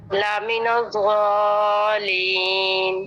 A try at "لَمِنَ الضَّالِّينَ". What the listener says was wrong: دوبارہ سے جس مد کے بعد شد ہوتی ہے وہ مد سب سے زیادہ لمبی ہوتی ہے تو لمبا کیجئے تھوڑا سا اور موٹا کیجئے کیونکہ ضاد کے بعد الف ہے. الف ہمیشہ ماقبل کے تابع ہوتا ہے. الف سے پہلے ضاد ہے.